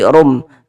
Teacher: Dengan cara merubah menjadi huruf mim. Kemudian dia didengungkan atau dighunahkan. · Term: iqlab